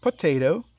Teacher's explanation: three syllable words, and the emphasis is on the second syllable